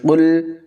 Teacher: قاف کو پر پڑھیں گے